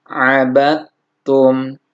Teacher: Jadi dal sukun bertemu ta maka diidghamkan. Dal sukun berarti melebur ke huruf ta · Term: idgham mutajanisain